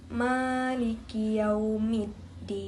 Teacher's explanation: Huruf kaf makhrajnya pangkal lidah dan langit-langit atas. Sifatnya hamz, syiddah, istifal dan imbita.